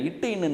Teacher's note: நாவின் நுனி அன்னத்தி நுனி · நாவின் நுனி, அன்னத்தின் நுனி. இத்து இந்த நாவின் நுனி, பல்லின் அடி.